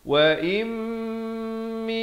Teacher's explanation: hukum idgham bi gunnah, masuk beserta dengung, 2 harakat.